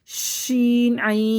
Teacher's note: شین میں تفشی ہوگی، منہ کے اندر آواز پھیلے گی